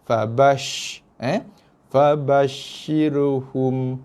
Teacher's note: Shin bersifat dengan sifat tafashi. Dia bunyi sh.